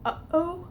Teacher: airflow stopped at that point and also then being vibrating so when you have a glottal stop you know it's going to be voiceless because the air is just stopped right there where the vocal folds are stopped at the glottis · that sound in the middle where you just kind of abruptly shut off the noise. Is the glottal stop.